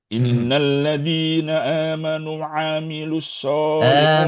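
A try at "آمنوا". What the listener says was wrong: Amanu. Panjang.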